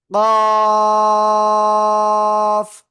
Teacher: জিহ্বার গোড়া তার বরাবর উপরে তালুর সাথে লাগিয়ে অক্ষরটা উচ্চারিত হবে, ঠিক আছে? একটু মোটা আওয়াজে